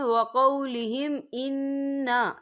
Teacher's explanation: یہاں نون مشدد ہے تو یہاں پر غنہ ہوگا